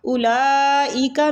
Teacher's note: اولئک الذین اشتروا الضلالۃ بالہدی، اولئک میں جو مد ہو رہی ہے نا، یہ مد واجب متصل ہو رہی ہے، ٹھیک ہے، حروف مدہ کے بعد اسی کلمہ میں حمزہ آ رہی ہے، تو اس کو ہم نے 5 سے 6 حروف کھینچ کے پڑھنا ہے